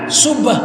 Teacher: Kalau subhanallah itu pasti bibir bergerak karena ada huruf ba. Ba itu kan huruf bilabial.